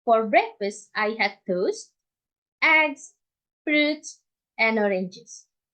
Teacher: The items before the last use a rising intonation, and the last item use a falling intonation. · We use falling intonation for the last item to signal that we are already done with with our sentence. Like we are already told all the items in our list. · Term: polarized intonation